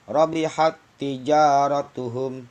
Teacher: tak sukunya dianggap tidak ada karena sudah masuk ke tak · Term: wajib idgham